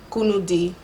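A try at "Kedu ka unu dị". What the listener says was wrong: Perfect.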